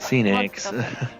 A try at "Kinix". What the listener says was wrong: It's Kinix, by the way. You keep saying Phoenix. It's a K sound for C, though.